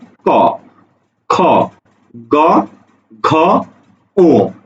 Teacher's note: আচ্ছা, দেখো আমরা যখন ক খ গ উচ্চারণ করি, ক খ গ যখন আমরা উচ্চারণ করি, ঠিক আছে, তখন আমাদের জিহ্বার গোড়া, মানে আমাদের যে জিহ্বা আছে, যে জিহ্বা দিয়ে আমরা স্বাদ গ্রহণ করি, সেই জিহ্বার গোড়াতে এসে আমাদের ফুসফুস তাড়িত বাতাসটা আটকে যায়। আটকে যাওয়ার পরে যখন তুমি ছেড়ে দাও তখনই উচ্চারণ হয় ক। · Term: কণ্ঠধ্বনি